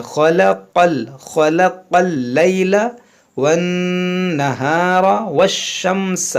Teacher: ख़ा और क़ाफ़ हुरूफ़ मुश्तालिया है, दोनों को मोटा पढ़ेंगे